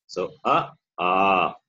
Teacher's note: A is the vowel whose place of pronunciation is the throat. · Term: short vowel A